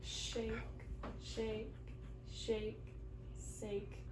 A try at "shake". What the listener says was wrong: I heard sake with a snaky S sound. We want to get the sh sound, so we're going to make a circle with our lips. Shake.